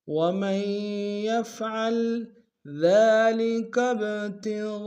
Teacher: ذال کو باریک ادا کریں گے ، ذال کے اوپر کھڑا زبر ایک اندام میں کھینچیں گے،